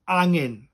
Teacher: to say it properly, as I say, drop the H, drop the G.